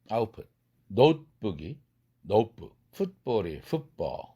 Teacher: 트 사운드가 트 음소가 프 음소로 바뀌어요.